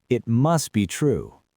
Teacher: We drop the T.